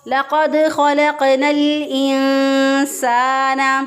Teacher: نون ساکن کی آواز کو ناک میں چھپا کر ایک الف کے برابر گنہ کرتے ہوئے ہم نے اس کو ادا کیا · اس کو ادا کیا، لقد خلقنا الانسان، سین زبر الف سا، الف مدہ ہے، ایک الف کے برابر اس کو لمبا کیا، یہاں پہ مد اصلی ہو رہی ہے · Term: اخفا